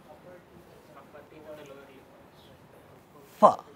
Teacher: Upper teeth and lower lip. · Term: labiodental